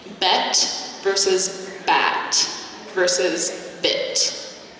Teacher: All of those are lax vowels. My jaw is relaxed. So there is a slight different place where I'm articulating these sounds, but they are relaxed.